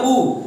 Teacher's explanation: आपका जो ओठ है, ओठ वो आगे की ओर निकल जा रहा है उ, तो इसका मतलब साफ पता चल रहा है कि उ का उच्चारण स्थान आपका ओठ से होगा।